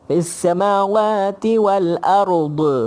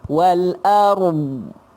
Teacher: Tapi huruf dha tak ada qalqalah. Dia ada istitalah. Bila istitalah kena sebut wal ard.